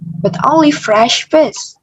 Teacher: kata fresh kita berikan pitch yang lebih tinggi dan juga vokal I dari fresh kita panjangkan sedikit lebih panjang.